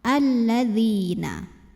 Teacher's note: Lam sukun dan lam fathah. Maka alif lamnya dilewatin atau diidghamkan langsung ke lam kedua. Alladzi, di sini ada hukum tajwid namanya mad tabi'i. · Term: alif lam syamsiyah